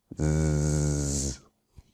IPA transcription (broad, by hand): z